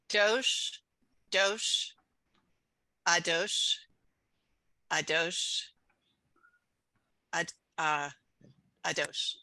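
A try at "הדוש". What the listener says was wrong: Remember, that's the hey, and we have to aspirate. The last word is ha-dosh. When we have the hey, which is like an H, you have to go, huh, you gotta, like blow out.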